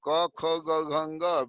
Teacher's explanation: आकु का मतलब होता है कवर्ग, क ख ग घ ङ, विसर्ग और ह, इनका उच्चारण कंठ से होता है, अतः इन्हें कंठ वर्ण कहते हैं